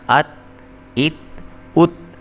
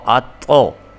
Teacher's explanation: یہ تا جو ہے اس کو موٹا کر کے یا پر کر کے نہیں پڑھنا، کیونکہ تا جو ہے وہ حروف قلقلہ میں سے نہیں ہے، اس لیے اس کو پر کر کے نہیں پڑھنا آپ نے۔